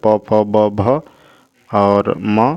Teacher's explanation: ये जो ध्वनियाँ है ये ओष्ठ ध्वनियाँ हैं